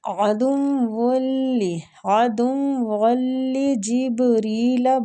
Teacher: با پہ کلکلہ کریں گے، اور را کسرہ کی وجہ سے باریک پڑھی جائے گی